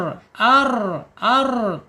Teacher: Takrir itu ketika dia diucapkan bergetar